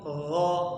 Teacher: huruf gha itu getarannya jangan terlalu kuat, jangan ghairil tapi biasa.